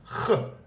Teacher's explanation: It's pronounced in the throat, so it can be a little difficult for English speakers because you don't have the sound in your language.